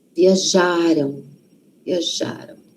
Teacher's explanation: O passado, então, a sílaba tônica, a sílaba forte, está antes.